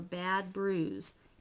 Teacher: you don't say the d before you say the bu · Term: assimilation of place